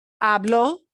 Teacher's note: you have to punch that o at the end